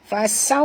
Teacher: Fasaw, huruf sin jaga safir, dan waw sifatnya lin, lembut, muncungkan mulut